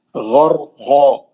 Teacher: غین مستعلیہ کا ہے، را کو موٹا پڑھنا ہے